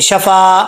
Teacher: फा के आगे अलिफ है एक अलिफ की मदार इसको लंबा करेंगे शफा आगे आन है आन को हमजा नहीं पढ़ना आन जबरा